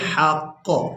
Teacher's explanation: اس لفظ پر اگر ہم وقف کرتے ہیں تو وقف کی صورت میں ہم نے قاف کے اوپر جو پیش ہے اس کو ہٹا دینا ہے